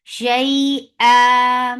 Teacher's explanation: So look, there is ya sakina, qablaha maftu. There is ya and there is fatha before it. This is long, 2 counts long, and it is soft. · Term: yalin